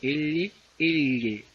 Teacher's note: Luego tengo los laterales, el sonido sale por los costados, L, L, costados, lados de la lengua.